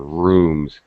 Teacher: M is a nasal, but it's a voice sound.